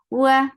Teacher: makhraj of waw is circling your lips with fata open your jaws the sound is short